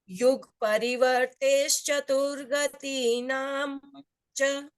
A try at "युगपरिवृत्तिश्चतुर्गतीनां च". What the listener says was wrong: वर्ते नहीं है, वृत्ति है, वृत्ति।